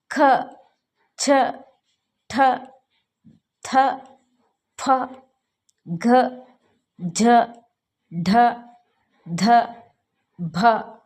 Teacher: ನಮಗೆ ಸ್ವಲ್ಪ ಹೆಚ್ಚು ಉಸಿರನ್ನು ತೆಗೆದುಕೊಂಡು ಉಚ್ಚರಿಸಲಾಗುತ್ತದೆ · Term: ಮಹಾ ಪ್ರಾಣಾಕ್ಷರಗಳು